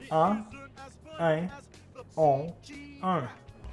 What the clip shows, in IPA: ɑ̃, ɛ̃, ɔ̃, œ̃